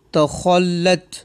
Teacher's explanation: خا بھی حروف مستعلیہ میں سے ہے، اسے پر کر کے پڑھیں گے